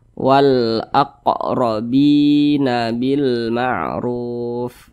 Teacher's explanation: huruf qf itu dia sukun maka dipantulkan cara bacanya ni Q nih sukun nih kita pantulkan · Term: Qalqalah Sugra, qalqalah sughra